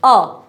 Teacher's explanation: ना जीभ आगे है ना जीभ पीछे है, बस बीच में अटक गई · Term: मध्य स्वर